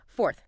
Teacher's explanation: Okay, this one's a double challenge because it has that tricky American R sound before the th. So, you need the or sound pulling back and then immediately bring the tongue forward for the night.